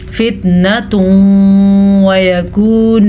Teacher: ان دونوں کو آپس میں ملائیں گے غنّے کے ساتھ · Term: ادغام بالغنہ